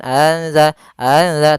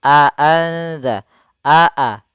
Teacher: Kemudian pada lafal aanza di sini harus jelas suara hamzahnya